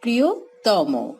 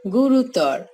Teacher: তর, তম, তন প্রত্যয়যুক্ত বিশ্লেষণ পদের অন্তঃস্বর অ সংবৃত হয়।